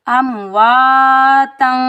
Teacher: تا کے اوپر تنوین ہے، 2 زبر ہیں تو یہاں ہم اخفا حقیقی کے ساتھ پڑھیں گے کیونکہ فا 15 ورڈ میں سے حروف اخفا کے 15 ورڈ میں سے فا آ رہا ہے تو یہاں ہم اخفا کریں گے اور باریک اخفا ہوگا۔